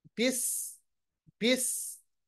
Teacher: سین جو ہے اس کو تیز ادا کیجئے، اور سین پہ جو صفت ادا ہوتی ہے وہ صفت سفیریہ، یہ حرف سفیریہ ہے، اس پہ جو صفت ادا ہوتی ہے وہ ہے سفیر.